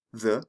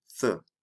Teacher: The voiced TH, the, and the voiceless TH, th. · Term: TH sounds